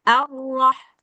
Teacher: Arroah getarannya itu sekali aja jangan sampai berulang-ulang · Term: Roh tafkhim